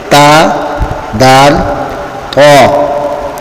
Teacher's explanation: مخرج نمبر 12 طا، دال، تا کا ہے۔ زبان کی نوک جب ثنایا علیہ یعنی سامنے والے اوپر کے 2 دانتوں کی جڑوں سے لگے تو یہاں سے طا، دال، تا ادا ہوتے ہیں۔ حروف نطعیہ 3 ہیں، تا، دال، طا۔